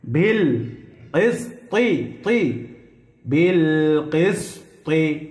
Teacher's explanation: ইয়া'মুরুনা বিল কিসতি, তি কিসতি বলা যাবে না, তি বললে এ ত তা হয়ে যাবে, ত মোটা করে পড়তে হবে